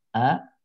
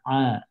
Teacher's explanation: Hamzah di sini bawah. A tenggorokan bawah. Ain tenggorokan tengah.